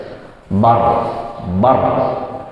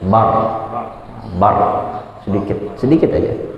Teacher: ketika bar terakhir sukun, itu getarannya jangan terlalu banyak, cukup aja, cukup. Jangan juga jadi re baru jangan juga dipantulkan, tapi sedikit aja.